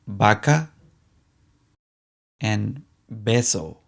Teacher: both the V and the B sound like the be in baby